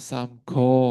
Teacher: harusnya keluar angin yaitu samgo, go-nya ya itu keluar angin, tapi dia bacanya menjadi samgo, go-nya tidak keluar angin.